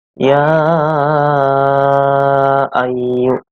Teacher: Di sini dinamakan mad jaiz munfasil dikarenakan ada mad tabi'i, ada huruf mad bertemu dengan hamzah, tetapi di lain kata atau di lain kalimat. Membaca panjangnya itu 2, 4, sampai 5 harokat.